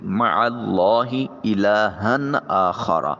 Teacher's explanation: ہا کی 2 زبر کی وجہ سے نون پیدا ہو رہا ہے، اس نون کو ظاہر کر کے ادا کریں گے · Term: نون تنوین